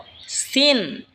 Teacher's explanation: সিন জিহ্বার আগা সামনের নিচের দুই দাঁতের আগার দিকে লাগা উচ্চারণ হবে সিন। এই ঝা যেখান থেকে উচ্চারণ হয়েছে সেখান থেকেই সিন উচ্চারণ হবে।